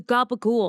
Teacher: Neapolitan and Southern Southern Italian dialect where C's are pronounced as G's and they like to drop that final vowel.